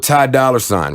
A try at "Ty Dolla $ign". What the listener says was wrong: It's Dolla. You're pronouncing the R too much.